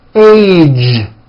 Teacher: It's not H, it's age with a voiced ending